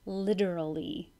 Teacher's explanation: that T sounds like a D